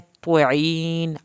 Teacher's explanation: त्वा इसको त्वा पढ़ना है, त्वईन आइन हल्क से पढ़ना है, आइन नून आखिर में ना हिले।